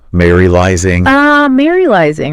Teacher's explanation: notice how like there's that emphasis on that second syllable